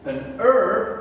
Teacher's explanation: we hide the h the first sound we hear is the e sound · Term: silent h